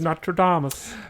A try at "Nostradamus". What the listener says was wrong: Nostradamus, actually. Yeah, we don't pronounce the S.